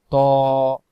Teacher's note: ত অক্ষর জিহ্বার আগা থেকে মোটা করে পড়তে হয়